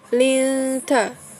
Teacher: Kemudian ikfa linta, yaitu nun sukun diikuti huruf ta ya. Nun sukun diikuti huruf ta. Jadi dibacanya berdengung ya.